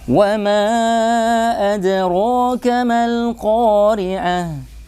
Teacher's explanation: Karena mim tarqiq. Maka alif mad pun, bunyi a pun harus ikut tarqiq seperti mim, tipis seperti mim.